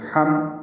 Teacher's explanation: میم ہونٹ بند کر کے پڑھنا ہے، اظہار شفوی ہے